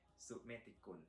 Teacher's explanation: So Su with the low tone and then Met with the falling tone as well, and Te with the flat tone, and Gun also with the flat tone.